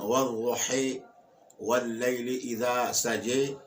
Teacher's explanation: اب نہ تو الف اپنے مخرج سے ادا ہوا ہے جی اور نہ یا کے مخرج سے، بلکہ دونوں کے بیچ ادا ہوا ہے جی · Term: الف ممالہ